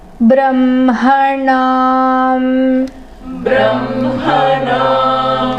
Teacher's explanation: The ha comes before ma, but it's pronounced the opposite way.